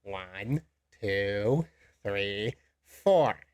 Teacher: when we finish, we have that falling 4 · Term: listing paradigm